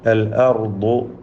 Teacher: റാ ദ്വാദ് വീണ്ടും തഫ്ഖീമിൻ്റെ അക്ഷരങ്ങളാണ്.